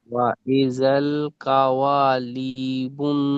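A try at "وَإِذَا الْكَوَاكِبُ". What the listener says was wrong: কাওয়ালি নয়, কাফ রয়েছে, কাফটা লাম পড়ে দিচ্ছেন। ওয়াইজাল কাওয়াকিবু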